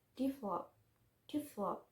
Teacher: two syllable word with the stress in the second syllable